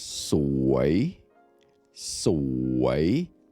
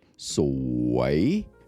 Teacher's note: The word beautiful in Thai is sui, sui. Rising tone, sui.